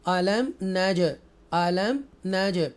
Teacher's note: अलम नज, अलम नज, इजहार शफवी और उर्फ कलकला, इको साउंड के साथ जीम को पढ़ेंगे